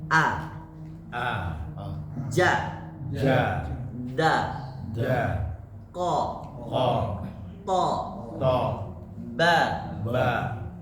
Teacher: ada sedikit suara yang ditahan dulu baru kemudian dilepaskan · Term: syiddah